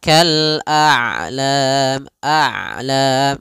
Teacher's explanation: Ain itu kedua-duanya tidak terlalu dialirkan tidak terlalu ditahan suaranya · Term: sifat bainiah